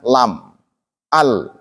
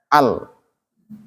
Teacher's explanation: jahar terbunyi jelas diakibatkan oleh dua pita suara yang tertutup rapat dan adanya getaran dan banyaknya udara nafas yang tertahan.